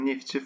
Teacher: Neftçi sözündə üç kar samitin işləndiyi bir söz kimi ifadə olunur